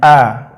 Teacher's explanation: sifat huruf A itu ada rukhawah, yaitu mengalir, suara mengalir